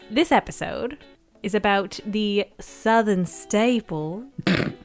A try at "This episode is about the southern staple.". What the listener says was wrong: What accent was that? Southern where? The first bit, you sounded like someone putting on an English accent. God blimey, governor. Have we got some barbecue sauce?